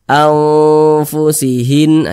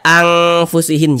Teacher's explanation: Cara membacanya itu disamarkan, kemudian juga didengungkan. Karena dia awsat, maka kadar samar dan kadar dengungnya pun dia seimbang. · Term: ikhfa hakiki awsat